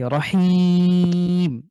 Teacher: এক আলিফের পরে ওয়াকফ করার কারণে ৩ আলিফ টেনে পড়ছি